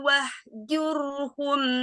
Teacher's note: Jur di sini ro-nya dibaca tafhim, ro sukun dibaca tafhim karena huruf sebelumnya doma. Hum mimati ketemu ha, idhar safawi.